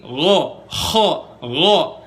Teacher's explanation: ghoin posisinya itu di tenggorokan paling atas dan makrojnya sama kayak huruf kho. Jadi kalau kalian mau tahu di mana garukan huruf ghoin yang bener, rasain garukannya di huruf kho.